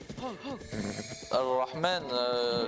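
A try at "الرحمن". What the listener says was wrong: Ouais, mais Ar-Rahman, pareil, il n'y a pas de sukun parce que ça se prononce pas vu que c'est un ara. Tu dis pas Al-Rahman, tu dis Ar-Rahman.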